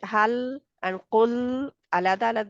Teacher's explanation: लाम जजम वाला उसके मखर से बाहर नहीं आना जुबान की नोक को वहां से हटाना नहीं है